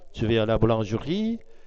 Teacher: dans la phrase je vais à la boulangerie, c'est la dernière syllabe de boulangerie qui porte l'accent. Cependant, au début d'une énonciation, il est naturel d'accentuer légèrement la première syllabe du premier mot pour initier la prononciation.